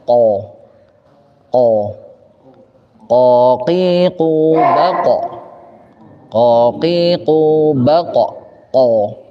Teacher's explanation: Qaf keluar dari mana? Dari aqsal lisan. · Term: huruf qa